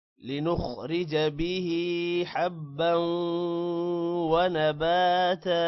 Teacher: لنخرج خو موٹا ہوگا باقی کسی بھی ورڈ کو لمبا نہیں کرنا